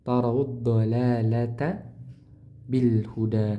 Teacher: Huruf ta-nya tipis ya. Jangan ikut ke bawah dengan huruf ro. Karena huruf ro tebal maka ta yang tebal tidak.